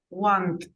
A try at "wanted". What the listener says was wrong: Wanted. Wanted. Whenever you have a verb that has a final T or D, you have to pronounce the ED. So the pronunciation is wanted.